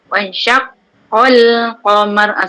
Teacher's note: Itu qaf tu diguna 2 kali. Bagi penekanan an-nabru.